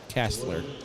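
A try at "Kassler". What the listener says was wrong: With an A. Not Kessler, as you always say.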